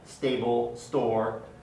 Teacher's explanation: When there's an S before the stop, so SP, ST, SK, or SC, the stop is pronounced without aspiration.